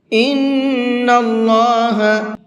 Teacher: اللہ کے لام کو پر کر کے پڑھیں گے